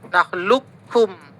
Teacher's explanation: Maka kalau dia masuk kategori kamil, qafnya ini nggak terbaca, langsung masuk ke kaf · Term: idgham kamil